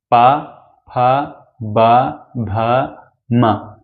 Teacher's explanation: जो हमारी लिप्स है लिप्स बोलते समय एक बार चिपकती है फिर खुलती है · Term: ओष्ठ व्यंजन